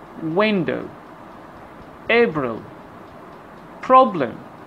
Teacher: the primary stress on the first syllable of the word and the other syllable is unstressed